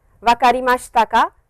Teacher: Now, over here you can see ka is used to express the speaker's doubt and uncertainty about something. An interrogative sentence is formed by adding particle ka at the end of a sentence with a rising intonation.